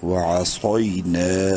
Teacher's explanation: نون الف زبر نا، الف مدہ ہے، نون کو ایک الف کے برابر لمبا کریں گے